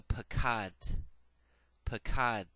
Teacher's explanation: The schwa there at the end is very, very soft. It's muttered, but you hardly hear it.